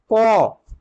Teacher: দেখে নিও উচ্চারণের স্থান কণ্ঠ থেকে যেটা উচ্চারণ হয় কণ্ঠ সেই কণ্ঠ থেকে অর্থাৎ গলা সেখান থেকে উচ্চারিত হয় ক এটা হচ্ছে অঘোষ বর্ণের অল্পপ্রাণ অল্পপ্রাণ বর্ণ অঘোষ বর্ণের ভাগের · কণ্ঠ সেই কণ্ঠ থেকে অর্থাৎ গলা সেখান থেকে উচ্চারিত হয় ক এটা হচ্ছে অঘোষ বর্ণের অল্পপ্রাণ অল্পপ্রাণ বর্ণ অঘোষ বর্ণের ভাগের মধ্যে